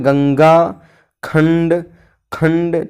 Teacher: जिन स्वरों को बोलते समय हवा केवल नाक से निकलती है, ठीक है, नाक से निकलती हैं, उन्हें अनुस्वार कहते हैं